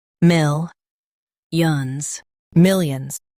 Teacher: Emphasize mil and soften yons.